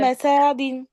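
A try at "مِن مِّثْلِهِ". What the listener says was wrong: সা টান হলো কেন?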